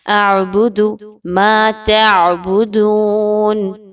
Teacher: ایک تو حرکت کو، جو پیش کی حرکت ہے، اس کو مجہول نہیں ہونے دینا، اور دوسرا اس کو لمبا بھی نہیں کرنا۔ اعبد ما تعبدون، عین کو پڑھتے ہوئے، اور پھر دون، دال پیشوا دو، واو مدہ 1 سے 2 الف کے برابر واو مدہ کی حرکت کو رکھیں گے۔